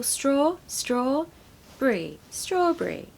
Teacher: so we stress the first syllable